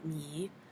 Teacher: For example, in the English word me, the vowel would be frontal because you feel the tongue kind of go forward